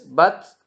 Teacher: ketika harakatnya sukun maka dia berdesis